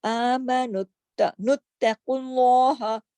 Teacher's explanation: قاف موٹا اور آگے لام بھی موٹا, کیوں؟ پیش آ گئی, اللہ کے نام سے پہلے پیش آ گئی.